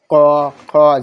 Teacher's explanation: জিহ্বের গোড়া এবং উপরের তালুর নরম অংশের সংযোগে এটা উচ্চারিত হয়। এটা হলো কবর্গীয়। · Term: জিহ্বামূলীয় বর্ণ